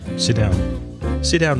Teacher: we don't bother to pronounce the T from sit it kind of merges with the disa burn that's right sit